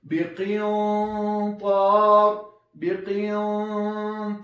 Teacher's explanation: کله چې غنه ډکه ادا کوو صوت له خولې نه اضافه خیشوم ته ځي